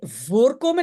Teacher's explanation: l'accent est sur la particule, c'est séparable.